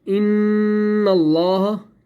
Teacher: اب ان جو میں نے کیا، ٹھیک ہے، اس کو کہتے ہیں غنہ۔ یہاں پر میں نے ایک الف کے برابر میں نے ان کو روک کے رکھا